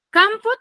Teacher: tiene la mayor fuerza de voz en la penúltima sílaba